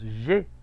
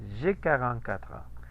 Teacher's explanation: Ese diptongo suena como una E.